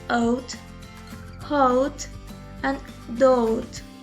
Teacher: Now our mouth is closing and the shaping of the lips is changing at the same time, rounding a little as we say the sounds.